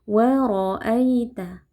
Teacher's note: Huruf ro kita baca tebal karena rnya berharakat fathah ya. Kita angkat pangkal lidah. Waroaita ada ya sukun yang sebelumnya berharakat fathah.